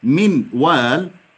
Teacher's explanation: لو نطقنا لفظ من وال تكون هيئة الشفتين مضمومة